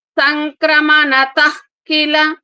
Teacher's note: క ముందు వచ్చిన విసర్గ కాబట్టి అహ రావాలి